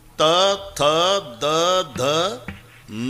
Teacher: थ किती ताकद लावून धक्का मारते जीभ आतून दाताला त थ द धन पूर्ण लाईन हे दंत्य आहे [संगीत] जेव्हा